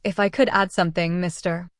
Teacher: Notice the rising intonation on add something.